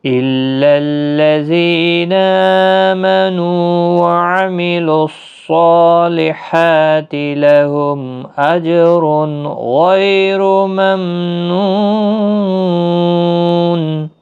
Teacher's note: جیم ساکن پر قلقلہ بھی ہوگا